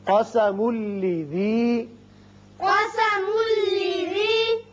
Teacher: میم کو جب لام سے ملائیں گے، تنوین کے بعد لام ہے، ادغام بغیر غنہ ہوگا